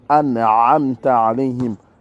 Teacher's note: Il faut essayer de le dire, le a. C'est profond au niveau de la gorge. Et après le mime, le ta et la voyelle a, nous l'avons en français. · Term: A grave